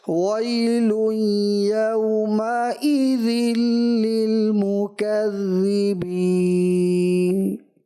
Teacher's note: نون ساکن نون حذف محسوس ہوا، نون کی ادائیگی تو واضح نہ ہو سکی۔ کوشش کریں کہ آخری حرف جو ہے نا اس کو بھی اگرچہ ساکن ہے لیکن اس کی کچھ آواز تو آئے گی، ٹھیک ہے نا۔